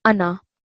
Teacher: this word ana, which means I, it's a very special circumstance where you don't prolong the alif for 2 seconds